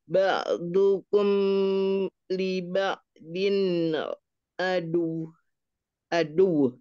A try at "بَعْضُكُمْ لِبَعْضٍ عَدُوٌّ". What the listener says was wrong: Linya jangan panjang, liba'din adu.